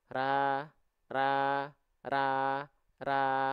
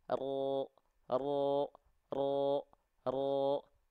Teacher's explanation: mulut tanpa senyum tidak ada perubahan sedikit pun perhatikan ra ini yang satu tanpa pangkal lidah yang kedua pangkal lidah naik